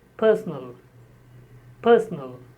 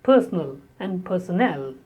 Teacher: The word personal is stressed on the first syllable and personnel is stressed on the third syllable. Personnel. Personal, this is my personal problem, and personnel is related to staff, employees.